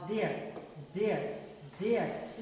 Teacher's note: इसमें जो TH है इसको बोलने में वाइब्रेट हो रहा है